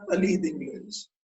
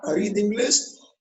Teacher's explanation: And you can see the consonant chart in the slide having la and ra as liquids. The la is lateral and the ra is central